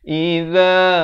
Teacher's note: Za di hujung lidah 2 harakat